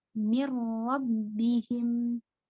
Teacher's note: Jadi tidak dipanjangkan karena tanpa gunnah. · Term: idgham bila gunnah